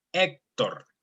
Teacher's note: Whenever you see the H at the beginning, the H at the beginning is mute. We don't pronounce the H at the beginning.